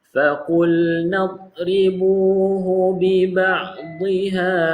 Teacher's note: Dha bukan qalqalah, jangan ada lantunan lah.